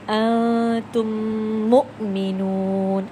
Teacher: مدغم ہو گیا ہے، ادغام شفوی ہوا ہے، ایک میم دوسرے میم میں مرج ہو گیا ہے، اس کے اندر مکس ہو گیا ہے